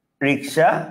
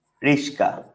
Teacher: ক আর দন্তা সেটা এক্সচেঞ্জ হয়েছে, যখন এক্সচেঞ্জ হবে তখন হচ্ছে কি আপনার ধ্বনি বিপর্যয়।